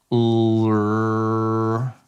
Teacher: drop down the two sides of your tongue, but the tip or blade of your tongue is still touching that gummy ridge behind your two front teeth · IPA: /l/